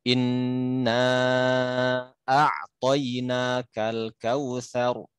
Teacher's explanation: kok itu innanya dibaca lama gitu